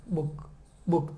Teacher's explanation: આ બુક શબ્દ મારે બોલવો છે તો મારા હોઠ મારે ભેગા કરવા જ પડશે. બુક બુક થઈ જ જાય ઓટોમેટિક.